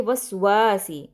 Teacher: वाव ज़बर के साथ आगे अलिफ मद्दा है, तो इसलिए वस्वासी, वा को लंबा करेंगे